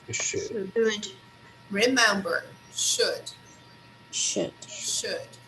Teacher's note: it's a little short because we do not pronounce the letter L.